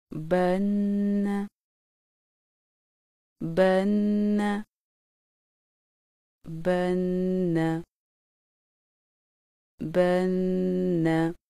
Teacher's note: شد والے نون پر غنہ کرنے کا طریقہ۔ نون شد کے غنہ میں زبان کو نون کے نکلنے کی جگہ پر ہلکے سے دباؤ کے ساتھ لگاتے ہوئے آواز کو ناک کی جڑ سے 1 الف کی مقدار کے برابر جاری رکھ کر ادائیگی کی جاتی ہے